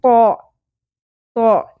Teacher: کچھ طوئیں کہتے ہیں کچھ طو کہتے ہیں ایسے نہیں پڑھنا ناک میں بھی نہیں لے کے جانی اواز کو اور واؤ بھی ایڈ نہیں کرنا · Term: پر